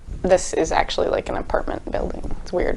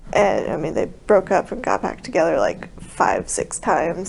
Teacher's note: a raspy quality she calls a creaky voice